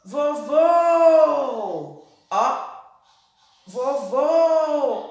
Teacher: A segunda sílaba foi a sílaba que mais se alongou. E o som foi de O.